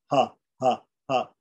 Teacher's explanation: the aspirate, which is guttural, completely from the throat, breathing air out